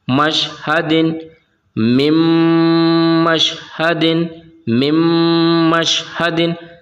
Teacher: تو دوستو ہم نے یہاں پر کیا کیا، نون ساکن کو میم سے ملا دیا، ادغام کر دیا، تو یہاں پر اب نون کی آواز نہیں آئے گی، یہاں پر میم کی آواز آئے گی